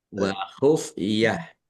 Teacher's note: Tadoru wa khufiah tak marbutah. Karena waqaf dibacanya ha sukun